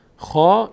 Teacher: الان اینجا فتحه بعدش الف صدای آ می‌گیره خا این خ باید با آ خونده بشه یعنی